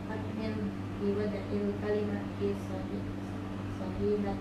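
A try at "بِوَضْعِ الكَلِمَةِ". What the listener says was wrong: Do di situ bukan kalqala, ya. Jadi nggak boleh biwad'i, nggak boleh biwad'i. Ya, jadi nggak boleh biwad'i. Kalau dal baru di situ kalqala, ya. Jadi biwad'il kalimati.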